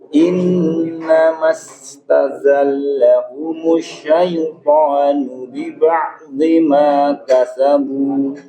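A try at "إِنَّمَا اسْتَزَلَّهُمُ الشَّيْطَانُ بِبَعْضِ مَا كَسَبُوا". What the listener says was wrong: Iya, ingat di huruf shin pada ini harus diperjelas ya tasydidnya. Innamastazallahumush syaitanu biba'dhi ma kasabu.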